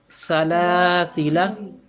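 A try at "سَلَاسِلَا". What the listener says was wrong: सीटी की आवाज कम आई है।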